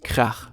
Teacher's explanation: German has the special ach sound, which sounds very throaty.